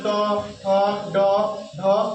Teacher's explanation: এই যে মূর্ধা হচ্ছে এই যে ট, জিভটা যখন মধ্যখানে যখন লাগে, জিভটা কি হয়? জিভটা যখন মধ্যখানে লাগে তখন হচ্ছে মূর্ধা ধ্বনি।